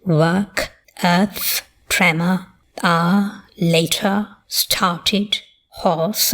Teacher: This is a non-rhotic accent that is historically just undergone the innovation of R dropping.